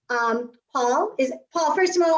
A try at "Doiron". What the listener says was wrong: You're Frenchifying it more than you need to. Doiron.